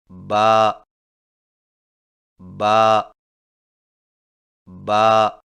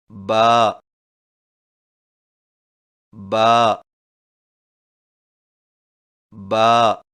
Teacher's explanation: با کی ادائیگی میں ہونٹوں کے گیلے حصے کو سختی سے ملا کر باریک آواز میں پڑھیں